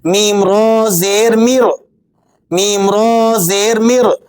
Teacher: تو را ساکنہ سے پہلا حرف میم ہے، اس کے نیچے زیر ہے۔ ضابطے اور قانون کے مطابق اس را کو باریک پڑھنا چاہیے تھا، لیکن ہم اسے موٹا ادا کر رہے ہیں۔